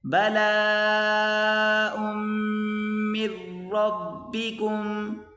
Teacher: بلاء کھینچ کر پڑھیں گے، یہاں بڑی مد ہے، بلاء من ربکم، میم کو را کے ساتھ ملا کر پڑھیں گے، من نہیں بلکہ مر، یہ آگے نون نہیں پڑھا جائے گا، من ربکم عظیم، من ربکم عظیم.